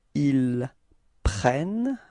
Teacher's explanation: you can notice that the first E of prennent is pronounced like eh